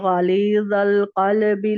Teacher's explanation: قاف کو پور رکھنا ہے، لام کو باریک، با کو باریک · غین پور رکھنا ہے، لام باریک رکھنا ہے، وا کو پور رکھنا ہے، پھر القلبی میں دیکھیے سب لوگ مارک کیجئے، آپ بھی مارک کیجئے۔